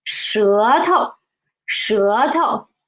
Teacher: Actually, 头 is a second tone, but when it is a suffix, it is a neutral tone.